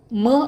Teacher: आता ओठ मिटा उरलेला श्वास नाकाने सोडत स्वाभाविक उच्चार करा